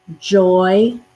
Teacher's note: the y does have the yes sound in this word it's just very soft very faint